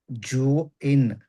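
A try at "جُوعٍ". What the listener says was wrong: దీర్ఘం తీయాలి. జూ ఇన్ చదివితే టోటల్లీ తప్పనమాట. ఇక్కడ జీమ్ అంటే జానే పలకాలి. జా పలికితే మనం అన్యాయం చేస్తున్నాం, తప్పు చదువుతున్నాం.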